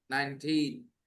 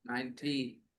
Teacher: When you say 19, just stress the last part a little more. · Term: stress the second part